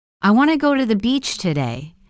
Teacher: The small words like to, the, and today are less stressed.